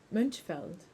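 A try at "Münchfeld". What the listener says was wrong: Why do you say U? You sound like a U. It's not a U.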